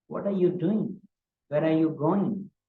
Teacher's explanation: So I bring my voice down, especially at the end of the sentence for the last word. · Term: falling tone